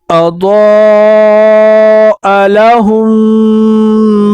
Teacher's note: اضاء لہم، یہاں پر میم ایک یہ بھی آیا ہے اور ایک یہ بھی آیا ہے، یہاں پر مشدد ہے اور یہاں پر ساکن ہے، تو ہم اس ساکن والے میم کو چھوڑ کر اس ہا کو اس میم کے ساتھ مشدد والے میم کے ساتھ ملا کر اس میں غنہ کریں گے